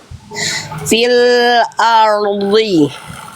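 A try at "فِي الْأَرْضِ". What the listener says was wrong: Oke, dotnya bagus tapi ro-nya is no problem ya, walaupun masih agak R gitu ya, PR, tapi dotnya sudah lebih baik.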